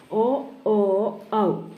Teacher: ഇവ ഉച്ചരിക്കാൻ തൊണ്ടയുടെയും ചുണ്ടിൻ്റെയും സഹായം വേണം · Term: സിന്ധ്യാക്ഷരം